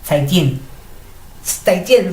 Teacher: Los dos son tonos 4. Y cuando digo zaijian, los digo como un poquito como de arriba hacia abajo. Zaijian. Voy bajando.